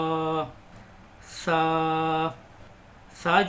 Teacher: जबान की नोक को हम ऊपर के दांतों पर लगाएंगे तो हमारा सा निकल जाएगा